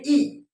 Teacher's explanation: हमारी जीभ का जो आगे वाला हिस्सा है ये ऊपर उठ जाता है थोड़ा सा